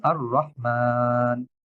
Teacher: যদি আমি থামি অস্থায়ী সুকুন করি নুনের উপরে তাহলে টান হবে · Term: মাদ সুকুন